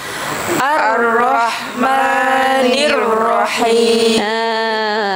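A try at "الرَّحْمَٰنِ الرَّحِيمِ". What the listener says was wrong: Okey, boleh. Masya-Allah.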